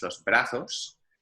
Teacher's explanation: if you're in Spain, the Z is pronounced much like a TH